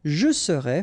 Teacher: final S not pronounced